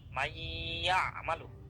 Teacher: নুনে আর গুন্নাটা হচ্ছে না, গুন্নাটা সরাসরি ইয়াতে চলে আসতেছে